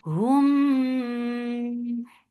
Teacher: This is ikhfa shafawi. So keep the sound in your nose for a longer time because it has gunna.